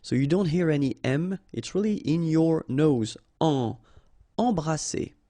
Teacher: All right, E-M here, and then you've got a consonant after, so you get the nasal en. So you don't hear any M, it's really in your nose. En. Embrasser.